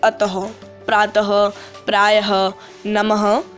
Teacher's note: इसका प्रयोग वर्ण के अंत में होता है। उच्चारण करने पर यह विसर्ग ह की ध्वनि देता है